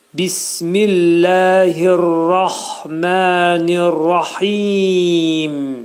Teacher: Mim hərfinin üstündə, mim hərfinin altındakı kəsrə atılır və mim hərfinin üstünə bir sükun gəlir. Mim hərfində izhar edirik. Ağız yumulur və mim hərfinin məxrəci eşidilməlidir.